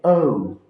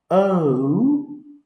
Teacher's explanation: হওয়ার কথা ছিল আউ, কিন্তু আউ না হয়ে এটা হচ্ছে ও, ও। এই দুইটা স্বর একসঙ্গে মিলে ও।